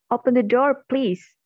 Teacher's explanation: the falling pitch we hear at the end of the statement signals that the utterance is complete. For the example, first is falling intonation.